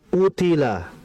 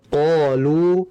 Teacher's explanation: Utila qof-nya memang huruf tebal, tapi ketebalannya masih di bawah ketika kondisi qofnya itu berharakat fathah.